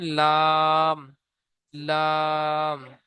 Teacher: জিভের আগার কিনারা এবং সামনের উপরের দুই পাশের দাঁতের গোড়ার সাথে লাগিয়ে উচ্চারিত হয় লাম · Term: 8 নম্বর মাখরাজ